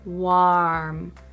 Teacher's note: Not warm, but warm. My jaw really drops when I say that vowel sound, warm.